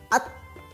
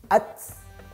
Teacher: Ketika disukunkan, ta itu mengalir nafasnya ya. At.